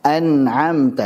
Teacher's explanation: Tidak dipanjangkan contohnya an'amta, ini enggak dipanjangkan. Dia aslul gunnah saja, pokok gunnah ya, karena dia sukun, punya sifat tawasud ya alirkan sedikit gitu.